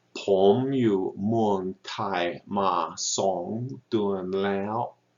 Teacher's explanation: We've got rising, low tone, flat tone or mid tone, another rising tone, and then a high tone.